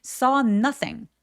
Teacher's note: So 더 길게 어 하고 아의 애매한 사이 정도로 더 길게 발음해 주세요.